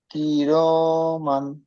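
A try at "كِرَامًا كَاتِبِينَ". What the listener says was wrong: কেটে কেটে বললে হবে না। পুরো ধরে পড়তে হবে। কিরমা কাতিবিনা।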